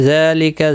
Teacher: ذال کے اوپر کھڑی زبر ہے، ایک الف کی مقدار کے برابر کھینچ کر پڑھیں گے۔ لکا کو کھینچنا نہیں۔